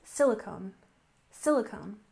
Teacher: We stress the first syllable here, silicone, silicone, and the first syllable in valley, valley.